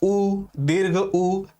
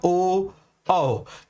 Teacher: जैसे मैं वृत्ताकार स्वर की बात करूं तो ऊ करेंगे तो होंठ गोल बनता है